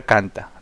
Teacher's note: En la palabra canta, la mayor fuerza de voz vendría a ser en can.